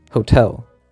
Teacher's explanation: in the beginning of a stress syllable take for example Hotel the stress is on the second syllable so T becomes aspirated